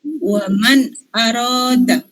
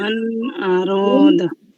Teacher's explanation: Keenam huruf ini disebut dengan huruf holqi. Cara membacanya dibaca dengan jelas tanpa berdengung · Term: idhar